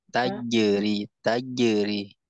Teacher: Tengah, tengah lidahnya tempel, bukan ujungnya, tengah lidahnya.